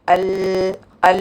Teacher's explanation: അൽഅൽ എന്ന് പറയുമ്പോൾ എട്ടു പല്ലിന്റെ അത്രയും ലെങ്തിൽ പ്രീമോളാർസ് വരെയുള്ള അത്രയും നീളത്തിൽ ഗംസിന്റെ അവിടെ നാവിന്റെ ഹാഫുൽ നാവിന്റെ സൈഡ്സ് നമ്മൾ പറ്റിച്ചു വെക്കുന്നുണ്ട് ല്ലേ അപ്പോ അതിലേകൂടെ സൗണ്ട് ഒഴുകാൻ പറ്റൂല്ല പിന്നെ സൗണ്ട് ാ ഈ സൈഡിൽ